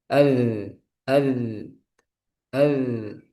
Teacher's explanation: Untuk zal dia sifatnya jahar. Berarti udaranya dia tidak ada. Udaranya dia tertahan. Jangan ada udara ya ketika mengucapkan huruf dalal. · [mendengus] Jadi az az itu salah. Yang benar rakhawah cuma suara aja nih yang ngalir